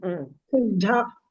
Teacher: the second dha is mahaprana